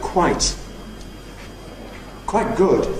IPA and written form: ˈkwaɪʔ ˈgʊd (quite good)